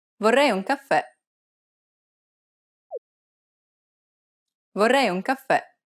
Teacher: Remember that the accent marker indicates that the syllable needs to be stressed. And since it's a downward stroke, it'll be more of an open E sound, like the E in red.